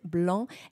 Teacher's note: It's a nasal sound. The A and the N are combined. Blanc. And the C is never, never, Don't never pronounce the C.